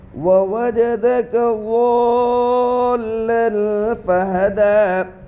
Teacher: لام کے اوپر 2 زبر کی تنوین ہے، تنوین کے بعد اخفا کے 15 حروف میں سے فا ہے، اس لیے تنوین کی آواز کو ناک میں چھپا کر پڑھیں گے، اس کو اخفا کہتے ہیں۔ · کھڑا زبر برابر ہے الف مدہ کے، اس لیے کھڑا زبر کو ایک الف کے برابر کھینچ کر پڑھے۔ دال کے اوپر کھڑا زبر ہے، کھڑا زبر حالت وقف میں اپنی حالت پر باقی رہتا ہے۔